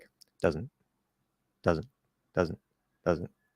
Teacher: not that we necessarily drop the Z although it's possible but we'll hit that Z very very lightly and quickly and you might not actually hear it